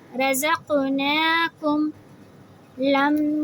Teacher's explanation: میم کو میم سے ملاتے ہوئے اپنے ہونٹوں کو آپس میں جوڑتے ہوئے تھوڑی دیر آواز کو لمبی کریں گے، 2 سیکنڈ جتنی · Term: میم تشدید